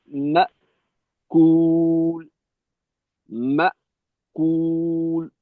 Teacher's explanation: হামজাকে শক্তভাবেই আটকানো, এখানে কোনো শিথিলতা থাকবে না। মা কুল, মা কুল মজবুতির সাথে হঠাৎ করে আটকে দিতে হবে, মাখরাজে বেশি চাপ রাখা।